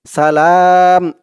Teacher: সালাম বলে এই পর্যন্ত থামবেন এই মিম পর্যন্ত এখানে বলে থামবেন মিমের উপরে পেশটা সাকিন হয়ে যাবে এখানে থামলে সালাম এরকম হবে তবে এখানে এই এক আলিফ টানটা জবরের পরে খালি